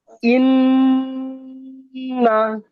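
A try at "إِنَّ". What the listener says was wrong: হ্যাঁ সুন্দর।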